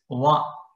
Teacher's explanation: vakara as danta, the teeth, as well as ostav, the lips. That too only the lower lip